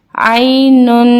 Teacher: دو پیش میں ہم تھوڑا سا غنہ کرتے ہیں